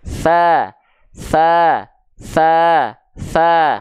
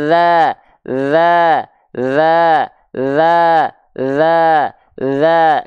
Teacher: Kalau huruf zal sama kayak sa, tapi ditahan nafasnya, jangan sampai keluar.